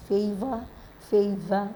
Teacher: So this is favor that ends with a schwa sound, inverted E